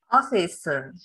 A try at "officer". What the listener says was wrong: Yes, ▁officer, ▁not ▁office. ▁您 刚 才 读 ▁office. Officer. 对 ， 这 个 叫 耳 。